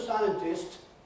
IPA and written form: ˈsaɪəntɪst (scientist)